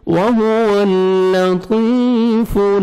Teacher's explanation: فا کو لام کے ساتھ ملانا ہے, لام کو آپ نے ہلانا نہیں ہے. وَهُوَ اللَّطِيفُ خا کو موٹا کر کے پڑھیں گے, اور با کو کھینچیں گے, یا مد ہے, یا ساکن سے پہلے زیر ہے.